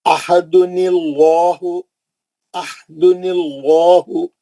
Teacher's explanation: अहदुनिल्लाहु, अहदुनिल्लाहु, ये नून पे जो ज़ेर लगा है वो आर्जी ज़ेर है। आर्जी ज़ेर लाम जलाला को पतला नहीं कर सकती, ज़ेर रहने के बावजूद लाम जलाला मोटा पड़ेंगे, क्योंकि वो ज़ेर असली नहीं है।